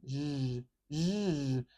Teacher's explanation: This sound is the voiced partner of the SH sound. So if we have SH, which uses this symbol, sh, if we add voice to that, it becomes zh.